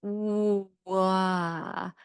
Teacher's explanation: And that's because once again, you're literally gliding the articulators as you say it. So if you say the W sound slowly, it'll be like wah as you retract the lips back. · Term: glides